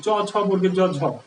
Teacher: চ ছ বর্গের জ ঝ এটা শুধু তালুতে লাগে, এই জন্য আমরা এটাকে কি বলবো তালেব্য ধ্বনি।